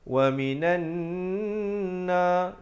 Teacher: وَمِنَ النَّاسِ, di situ nan, di situ wajibul gunnah, wajib dengan 2 harakat